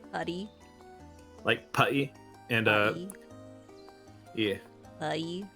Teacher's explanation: southern Americans and English people don't really pronounce T's if it's like in the middle of a word